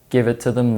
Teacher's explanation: the e sound in them may be replaced with the schwa sound in Connected speech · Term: weak form